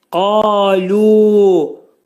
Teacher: Qaf hərfi qalın oxunur. Qaf hərfinin məxrəci dilçəyin başlanğıcındadır. 2 hərəkət miqdarında qaldırılacaq.